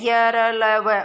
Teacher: अंत्यस्थ यानी कि बीच वाले, अंत्यस्थ जो बीच में स्थित हैं, यानी कि न तो स्वरों की तरह है और न व्यंजनों की तरह, बिल्कुल बीच में स्थित हैं, आसानी से बोले जाते हैं, हवा भी आसानी से निकल जाती हैं। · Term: अंत्यस्थ व्यंजन